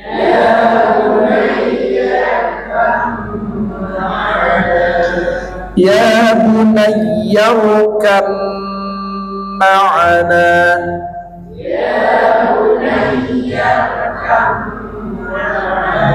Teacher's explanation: upami mim bertasdid kan kedah ditahan digunakan dua harakat